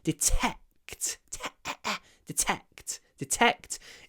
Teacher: the vowel gets kind of swallowed. It becomes a very breathy vowel. It's almost like we aspirate the vowel.